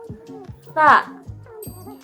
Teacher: Ciri-ciri pelafalannya adalah yang pertama, meletakkan ujung lidah antara gigi atas dan gigi bawah dengan berbentuk suara yang terhembus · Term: huruf ta